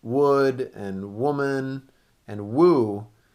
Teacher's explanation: a rounded sound like w and then oo